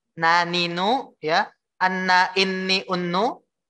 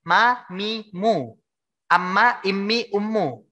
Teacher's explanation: cara terjadinya ghunnah itu yang pertama itu lewatin hidung dulu Pak termasuk lewat hidung suaranya keluarnya lewat hidung · suaranya masuk ke dalam rongga hidung atau berdengung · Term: gunnah